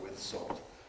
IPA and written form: wɪð ˈsɔːlt (Would you like it with salt?)